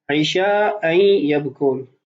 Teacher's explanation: وَجَاءُوا أَبَاهُمْ عِشَاءً يَبْكُونَ، محل استشہاد ہے عِشَاءً يَبْكُونَ، اصل میں ہے عِشَاءً يَبْكُونَ، تنوین ہے، ما بعد حروف یرملون میں سے یا ہے تو اس لیے یہاں پر غنہ بھی ہوگا ادغام بھی ہوگا